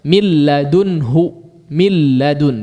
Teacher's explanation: Pasti akan disertai dengan gunnah, kecuali nun dan mimnya betul-betul melebur kepada huruf berikutnya, secara khusus nun, ya. Nunnya bersatu atau melebur kepada huruf berikutnya, maka tidak ada gunnah lagi yang tersisa